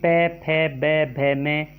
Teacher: प वर्ग में प, फ, ब, भ में उच्चारण स्थान होष्ट है। अगर इनको हम ओट अगर नीचे का काट देते हम नहीं बोल सकते।